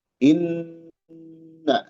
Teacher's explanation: Inna wagunatun nun almusyaddadah. Gunah nun yang bertasydid. Inna ditahan ya.